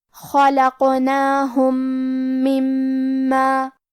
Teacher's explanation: کلمت مما، میم حروف الادغام میں سے ہے تو ہم پہلے میم کو دوسرے میم میں ملا کے ایک ہی میم غنہ اور تشدید کے ساتھ پڑھیں گے